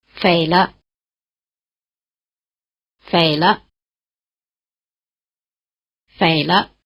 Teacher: After this tailless low tone, which is sometimes called the half third tone, the pitch of the neutral tone is near the top